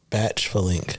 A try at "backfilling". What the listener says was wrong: I think it's not the ch sound. I think you can lose that. I think it's just back.